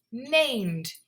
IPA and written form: neɪmd (named)